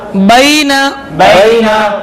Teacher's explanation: लीन को बगैर खींचे बगैर चटका दिए मारूफ पढ़ते हैं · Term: या लीन